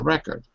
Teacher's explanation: if it's record the stress is on the first syllable and it's a noun